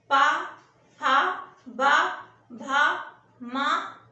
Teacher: जिसमें ओंठ का प्रयोग होता है, मुंह के अंदर के हिस्से का नहीं, सिर्फ ओंठ का प्रयोग होता है। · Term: ओष्ठ ध्वनियां